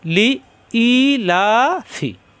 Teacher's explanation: লিলাফি পড়লে হরফও বাদ যায় টানও বাদ যায়